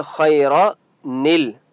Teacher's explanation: अगर मिलाकर पढ़ेंगे तो कैसे पढ़ेंगे, खैरनिल, नून को लाम के साथ मिलाएंगे।